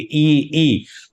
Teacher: ई के उच्चारण में अंदर तालू के पास से जो जीभ ऊपर उठने के कारण तालू के पास से मुख विवर सकरा होता है · होती है। इसका कारण क्या है, ई तालव्य के पास है, जीभ हमारी तालु के करीब पहुंच जाती है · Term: संवृत